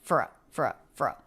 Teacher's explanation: uh so these two words linked together and reduced for firfer it's almost like we don't have a vowel here it's the F sound and then the schwa R sound and our absorbs the schwa so they're just one sound frou